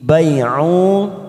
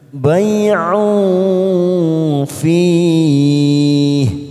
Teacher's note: ain duma tanwin bertemu fa warna hijau, namanya ikfa ausat, kita samarkan bunyi tanwin pada huruf ain.